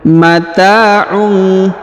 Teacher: huruf ta dipanjangkan 2 harokat yang ini karena di depannya terdapat alif ya.